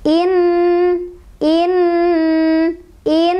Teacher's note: ada nun bertasydid, dibacanya, didengungkan 2, 3, atau 4 ketukan. In, in, in. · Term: gunnah